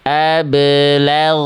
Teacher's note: Suara dari huruf ghoin dialirkan, bukan dipantulkan. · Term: ghoin sukun